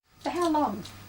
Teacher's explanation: This is a question too, but it has a falling tone.